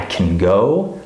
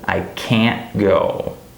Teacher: this word can is not stressed, it's reduced